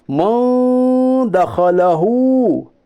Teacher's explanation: इख्फा की मिकदार एक अलिफ के बराबर है।